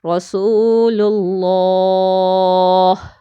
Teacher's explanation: لفظ اللہ سے پہلے لام کے اوپر پیش آ گئی ہے، اس لیے اس لام کو بھی موٹا اور پر پڑھیں گے